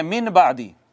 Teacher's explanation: نون میم سے بدل جاتا ہے، چھوٹی میم سے بدل جاتا ہے۔ یہ جو اقلاب کی چھوٹی میم ہوتی ہے یہ بھی ساکن ہوتی ہے، یہ بھی ساکن ہوتی ہے۔